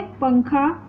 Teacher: अंग को अनुस्वार कहते हैं क्योंकि इसका उच्चारण स्थान नाक होता है और इसका चिन्ह होता है ऊपर एक बिंदु।